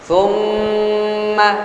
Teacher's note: mim tasydid atau mim musyaddadah wajib gunnah